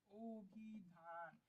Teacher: অভিধানের ক্ষেত্রে অকে আমরা ও বলে ফেলছি